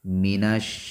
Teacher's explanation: مینش، میم کو بھی نہیں کھینچیں گے، نون کو شین سے ملائیں گے۔ مینش، شین، یہ اس کا مخرج یہ ہے کہ زبان اور تالو کا درمیانی حصہ وہاں سے شین ادا ہوتا ہے، اور اس کے اندر صفت تفشی بھی پائی جاتی ہے، آواز منہ کے درمیان پھیل جاتی ہے۔